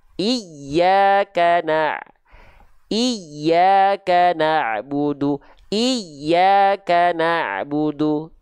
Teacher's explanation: Jadi bukan hanya sekedar tekanan biasa pada huruf-huruf bertasydid, tapi penekanan lebih kuat lagi. · kalau tepat dia nadanya seolah lebih tinggi daripada nada sekitarnya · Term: nabar